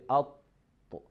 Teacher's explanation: the head of our tongue connects or touches the border between the upper gum and upper incisor. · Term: letter Ta